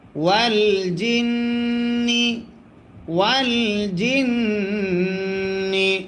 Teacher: নুনে যদি তাসদিদ হয় গুন্না করা ওয়াজিব হয়